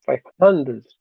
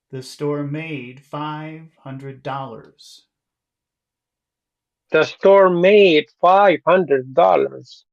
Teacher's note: I think we would probably want to emphasize the word five a little bit